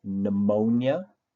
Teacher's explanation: the P is silent and you start the word with the sound n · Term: silent letters